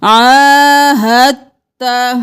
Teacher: عاہدت یہاں پر ہم عاہدتا نہیں کریں گے ہا کو تا کے ساتھ ملائیں گے ساکن کو چھوڑ کر مشدد حرف کو پڑھیں گے